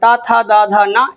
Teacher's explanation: इनका उच्चारण स्थान दंत है। ये दंत से उच्चारित होते हैं। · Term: त वर्ग